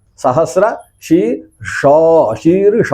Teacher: ಹಾಗಿಲ್ಲ ಸಹಸ್ರ ಶಿ ಷ ಶೀರ್ ಶ ಅಂತ ಹೇಳುವಾಗ ಶಕಾರ ಮೂರ್ಧನ್ಯದಲ್ಲಿ ಬರಬೇಕು ಶಕಾರವು ತಾಲವ್ಯದಲ್ಲಿ ಬರಬೇಕು ಸಕಾರವು ದಂತ್ಯವಾಗಿಯೇ ಹೊರಗೆ ಉಚ್ಚರಿಸಲ್ಪಡಬೇಕು